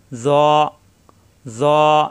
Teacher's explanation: জিহ্বার আগা দাঁতের আগায় কিন্তু মোটা হবে, জ, জ। 1 আলিফ পরিমাণ টান, নোটা হবে, জ।